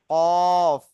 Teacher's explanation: জিভের গোড়াটা যদি উপরের তালুর সঙ্গে লাগাই, তাহলে উচ্চারণ হবে কফ